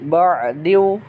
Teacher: dimasukkan si tanwinnya ke dalam huruf selanjutnya, yaitu kepada waw. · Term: diidghamkan